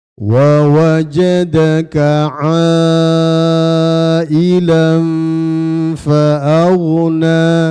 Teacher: huruf mad ada hamzah satu kata itu namanya mad wajib ya. Jadi dibaca 4 sampai 5 harakat ya.